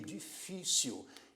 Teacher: a palavra difícil é uma palavra que tem o acento tônico sendo a sílaba do meio